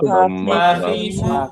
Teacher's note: তাই না গলার শেষ অংশ থেকে ওকে এরপরে ফা দিয়ে বলি ফা খুব সহজ উচ্চারণ উপরের দাঁত নিচে ঠোঁটের পেট